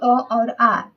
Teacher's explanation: अ का उच्चारण स्थान क्या है? या आ का उच्चारण स्थान क्या है? ठीक है? तो इसका कंठ यानी गला है।